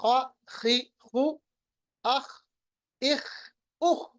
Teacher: خا اور غین پڑھتے وقت میں نے تھوڑی سی خراش کر لی، ان کو موٹا ہم نے پڑھ لیا